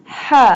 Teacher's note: Ha pronounced from the middle part of the throat